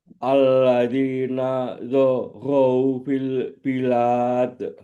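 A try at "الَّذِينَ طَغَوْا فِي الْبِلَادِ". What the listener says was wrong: Nataghaw, taghaw bukan za, taghaw. Alladzina taghaw fil bilad.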